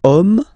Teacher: as in French, H is not pronounced, so the first sound that we hear is O